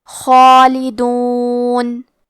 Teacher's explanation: مد الف میں پیچھے والے حرف کا حکم لیتے ہیں تفخیم میں اور ترقیق میں، تو کیونکہ اس کے پہلے حرف الخاء ہے تو ہمیں مد الف کو بھی تفخیم سے ادا کرنا ہے